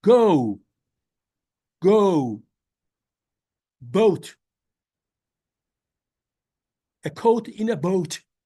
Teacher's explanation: Turkish people do not give this oo sound at the end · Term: rounding